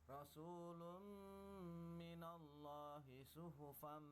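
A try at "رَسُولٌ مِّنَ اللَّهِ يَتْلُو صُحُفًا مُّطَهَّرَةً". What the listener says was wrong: Yatslu, ketinggalan.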